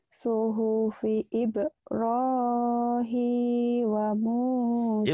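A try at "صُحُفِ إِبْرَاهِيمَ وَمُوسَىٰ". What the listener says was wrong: Ibrahima ketinggalan. Hima, maknya ketinggalan. Ketinggalan dari tadi. Ibrahim ma. Ib kalau sugro ronya mad apa mad asli ronya juga tebal tafkhim hi matobi manya kosar wanya kosar pendek mu matobi wa Musa sanya mad asli.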